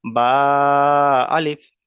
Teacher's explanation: বাটা এক আলিফ পরিমাণ টান দিচ্ছে। কিন্তু আলিফটা কোন টান দিচ্ছি না।